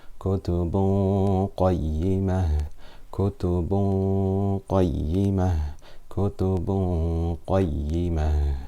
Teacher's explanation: tanween followed by qaf, which is a full mouth letter. So the ghunna will be full mouth.